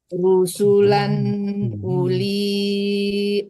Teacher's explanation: rusulan harus jelas karena di depannya huruf izhar